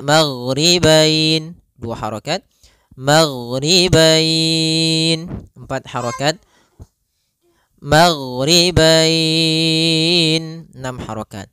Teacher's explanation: atau wau sukun di akhir bacaan panjang untuk mad lin sendiri Kita boleh panjangkan dua harakat boleh empat harakat boleh pula enam harakat